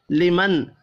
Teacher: نون ساکن کے بعد ہا ہے، اظہار حلقی ہوگا، غنہ نہیں ہوگا